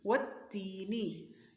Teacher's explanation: واو کہتے ہوئے پڑھتے ہوئے منہ کو گول کر لینا ہے، تا کو باریک پڑھنا ہے